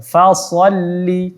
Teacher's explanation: Jadi huruf fa kita jelaskan saja fa sholli. Shadnya baru kita tebalkan.